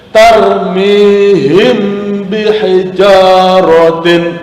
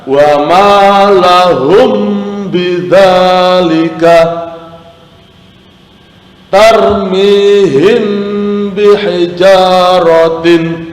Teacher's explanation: Hukum bacaan disebut ikhfa safawi apabila ada mim mati atau mim sukun, ada huruf mim, ada sukun di atasnya bertemu dengan huruf ba, maka cara membacanya harus dibunyikan samar-samar di bibir dan didengungkan